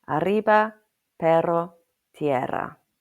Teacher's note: the English pronunciation of the double r means you need to roll the rs. So raise your tongue in your mouth and curl it slightly backwards.